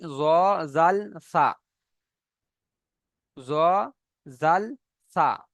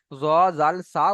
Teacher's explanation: জিভের আগা সামনের উপরে দুই দাঁতের আগার সাথে লাগিয়ে উচ্চারণ হয়